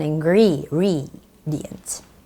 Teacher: you sort of have to lift up the end, ingredients, because it's a question